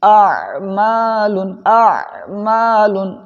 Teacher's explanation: یہیں پر فرق کرنا آپ کے لیے ضروری ہے کہ پہلے حمزہ کی آواز پیدا ہو پھر بعد میں عین کی آواز ہو